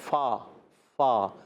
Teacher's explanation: اوپر کے دانتوں کے کنارے نچلے ہونٹ کے تر حصے سے